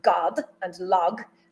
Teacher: In both the words god and log, the stressed vowel is identical. They're both ah and the corresponding consonants subsequent to that vowel d in the case of god and g or g in the case of log belong to the same class.